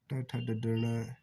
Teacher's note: ये मूर्धा से बोले जाते हैं और मूर्धन्य कहलाते हैं। यानी अपनी जीवा जो है वो मसूड़ों को स्पर्श करती है।